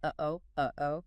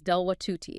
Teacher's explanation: the glottal stop, or the hamza in Arabic. It's that little catch in your throat, like the pause in the middle of the English word, uh-oh, uh-oh.